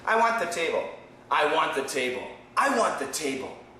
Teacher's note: did you hear the T no there is no T